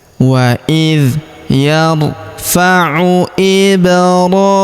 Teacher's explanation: huruf hi kita panjangkan dua harakat karena di bawahnya terdapat tanda alif kecil · huruf mu langsung sambung ke huruf lam yang berharakat sukun